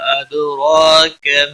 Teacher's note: دال ساکن پر قلقلہ ہوگا، را کے اوپر کھڑی زبر ہے، 1 الف کے برابر کھینچ کر پڑھیں گے۔ را کو پور بھی پڑھیں گے، کیا کو کھینچنا نہیں۔